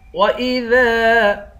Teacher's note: دال کے بعد الف ہے، الف کو ایک الف کی مقدار کھینچیں گے